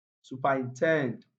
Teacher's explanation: the first three syllables contain weak vowel sounds, so they are not stressed